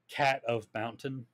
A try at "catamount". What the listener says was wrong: But you're not pronouncing it like catamount. Cat of mountain. You're pronouncing it like cad a mountain.